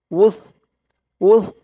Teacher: এই সার উচ্চারণটা একদম নরম পাতলা হবে, জিহ্বার মাথা উপরের দাঁতের মাথার সাথে লাগবে এই সার উচ্চারণটা করার সময়। উস, উস, ক,